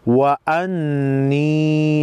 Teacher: نون مشدد کو پہلے زبر حمزہ کے ساتھ ملا کر, دوسری مرتبہ خود یا کے ساتھ ملا کر پڑھیں گے. وَأَنِّي نون مشدد پر غنہ ہوگا